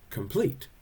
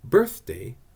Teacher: An iamb, I-A-M-B, is what you call 2 syllables where the first syllable is not stressed and the second one is